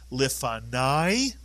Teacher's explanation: the kamatz with a yud at the end of a word is the same as a patach plus a yud. It is the vowel sound I.